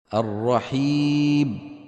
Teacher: بتر صوتها عند الوقف عليها حتى تكاد تصير باء نحو الرحيب اسمعوا الرحيب.